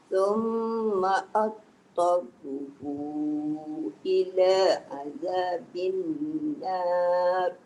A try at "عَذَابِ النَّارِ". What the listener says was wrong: Naru. Na dah cantik dah tu. Ro tebalkan. Azabin naru.